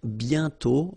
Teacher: You write it, but you don't pronounce it. And then the final T is not pronounced